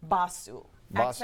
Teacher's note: Accent on the first syllable.